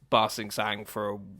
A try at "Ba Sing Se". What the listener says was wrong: You were so close. Now. It was just the last letter. Ba Sing Se, not Ba Sing Sang.